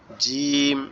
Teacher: জিমটা হচ্ছে আমাদের জিহ্বার মধ্যকান উপরে তালুর সঙ্গে লেগে উচ্চারিত হবে একটু শক্ত আওয়াজ হবে একটু শক্ত আওয়াজ হবে যেমন জিম এরকম ভাবে আর মিমটা আমাদের